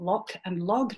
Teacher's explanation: a minimal pair that differs only in voicing of that final consonant